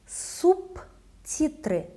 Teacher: For example, in the word subtitrы, the letter T, voiceless, makes letter B become voiceless as well, to become P.